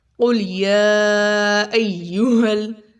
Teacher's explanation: اس میں سب سے پہلے دیکھا قل، اس میں قوف بہت موٹا پڑھیں گے، قوف قوف، قل لام باریک، قوف موٹا